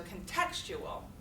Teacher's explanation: Where's the stress on that word? On the second syllable, contextual.